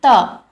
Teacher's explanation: त का उच्चारण करेंगे तो आपको लगेगा कि आपकी जीभ जो है वो आपके दांतों पर लग रही है।